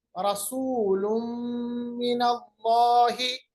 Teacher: दो पेश को हमने मीम के साथ मिलाया क्योंकि दो पेश के बाद मीम आ गया या तनवीन के बाद हमारे पास मीम आ गया, मिनल्लाहि, इदगाम बगुन्ना।